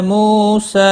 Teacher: مو واو مدہ ہے، ایک الف کے برابر کھینچ کر پڑھیں گے